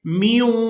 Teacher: میم کو واؤ مشدد کے ساتھ ملاتے ہوئے غنہ کے ساتھ ادا کریں گے